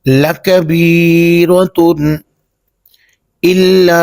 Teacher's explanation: یہاں پہ ہم اخفا نہیں کریں گے بلکہ اظہار کریں گے، یعنی غنہ نہیں کریں گے۔